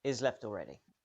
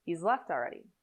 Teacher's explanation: listen again here the word he is shortened or removed so the sentence starts with a very short eye vowel linking to a z sound